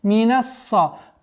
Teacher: С огласовки фатха уходим на удвоенный сад.